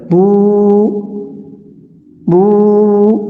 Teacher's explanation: واو ساکن ہو اور اس سے پہلے حرف کے اوپر پیش ہو، واو ساکن ہو یعنی اس پر جزم ہو یا اس پر وقف ہو، اس سے پہلے حرف پر پیش ہو تو اسے مدہ کر کے پڑھنا ہے، یعنی ایک الف کے برابر کھینچ کر پڑھنا ہے، بو بو، ایسے ایک الف کے برابر۔